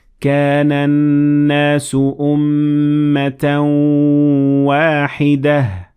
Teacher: But when I continued reading, I said أمة واحدة. The second word is wahida and it ends with ta marbuta, but when I stopped at it, I turned the ta marbuta into a ha. So I said wahida.